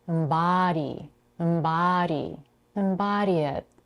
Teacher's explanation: notice how elongated the vowel a as in father is here